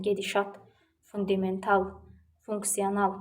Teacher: gedişat, fundamental, funksional bu tip sözlərdə al, at vurğu qəbul edir.